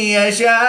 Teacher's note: مدہ کے بعد حمزہ اسی کلمے میں ہے تو یہاں پر مد متصل ہوگی، 3 سے 5 الف تک کھینچ کر پڑھیں گے